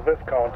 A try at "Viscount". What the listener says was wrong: Viscount. It's pronounced Viscount. You have to remember in French the S can be silent sometimes in French. So Viscount is pronounced, well, with no S, just long I.